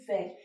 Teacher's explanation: जो आपकी जीभ है वो आपके दांतों को भी टच करती है और आपके ओष्ठ भी उसमें मिलते हैं, तो जो व है वो एक आपका कौन सा है, दंत ओष्ठ्य है।